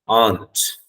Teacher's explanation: The R sound will not be audible.